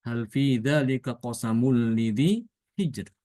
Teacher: Hijr itu rnya dibaca tipis.